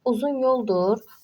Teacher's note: Burda yoldur vurğu birinci hecanın üzərinə düşəcək